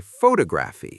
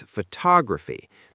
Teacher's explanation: Lots of learners say photography, stressing the first syllable, but it's photography. The stress sits on the second syllable. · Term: Word stress